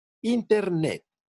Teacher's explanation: en la palabra Internet, las átonas son IN-TER y la tónica es NET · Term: sílaba tónica